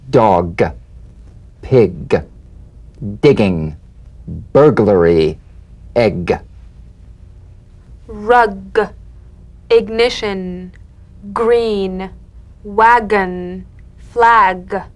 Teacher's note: you'll feel a crisp tap and a voiced pulsation of the back of the tongue